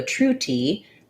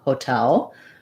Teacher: in hotel we do a true t because the stress is on the second syllable